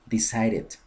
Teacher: una D o una T entre dos vocales, la D se transforma en una R con un flap en inglés americano